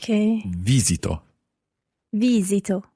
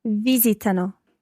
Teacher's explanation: the stress in most of the parts of this verb, at least the first, second and third person singular and the third person plural, is on the first syllable